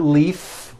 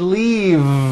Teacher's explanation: it's not leaf with an unvoiced f i should have said leave with a voiced v sound